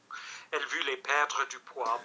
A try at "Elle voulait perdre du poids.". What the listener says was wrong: But remember, everything is going to be a deeper vowel. Every one of those was a little bit off. Because, why? Because when you don't blow, what's an English person doing an impression of a French person? Ho-he, ho-he, ho-he, ho.